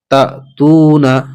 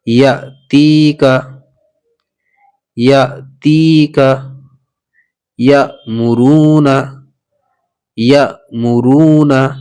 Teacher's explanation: اگر حمزہ کے اوپر سکون آئے گا تو ہم اس کو جھٹکا دے کر پڑھیں گے